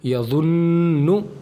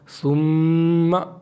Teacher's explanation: नून और मीम पर तशदीद हो तो गुन्ना होगा